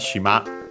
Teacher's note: the strictly Japanese word for island, shima, accent on the last syllable